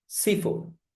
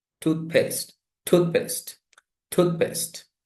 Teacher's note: But in this context, in the compound, nouns, in the compound nouns here, made out of the 2 nouns from form 1 word in a compound noun, the most stress is on the stressed syllable of the first word, not the second word.